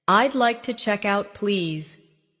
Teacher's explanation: Notice the smooth link between check and out.